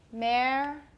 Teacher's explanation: I do have aspiration, but not as much as for key. Key, I have a lot of aspiration, but American, I have some, not quite as much.